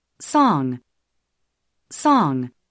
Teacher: 입술 오픈 라운딩과 혀끝을 뒤로 당겨 혀 뒷부분이 위로 올라가는 그런 움직임을 소리로 느껴보시기 바랍니다. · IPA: [o]